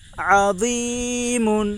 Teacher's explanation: یا ساکن سے پہلے زیر ہے اس لیے یا مدہ ہوگی. یا مدہ کو ایک الف کے برابر کھینچ کر پڑھیں